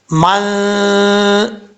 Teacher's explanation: یہ غنہ کی آواز ہے، اس کو غنہ کہا جاتا ہے، آواز ناک میں جا رہی ہے